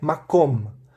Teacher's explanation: A ênfase está no kom e não no ma. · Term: sílaba tônica